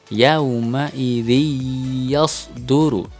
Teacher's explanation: Kasrah tanwin di bawah huruf zal tidak boleh terbaca n lagi, tetapi harus masuk ke dalam huruf ya. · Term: Idgham Bighunnah